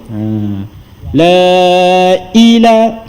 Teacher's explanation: bila kita nak menyebut huruf hamzah tu, dia ada terputus sikit suara, kan? Terputus sikit suara tu. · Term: saktah